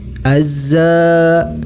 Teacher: alif lam tidak nampak tapi dimasukkan langsung kepada huruf Zai Azza hukum bacaannya adalah motto by dibaca panjang sebanyak dua harokat